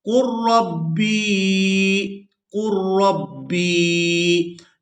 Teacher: یہاں پر ہم نے لام کو ادا نہیں کرنا، قاف کو را مشدد کے ساتھ ملائیں گے